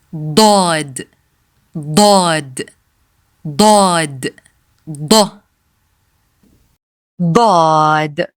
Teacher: Daad has no English equivalent, and in a matter of fact, it has no equivalent in any other languages. Daad is a deep, strong d sound, different from the regular da, as in dog. It is pronounced with a lot of tongue pressure and is unique to Arabic.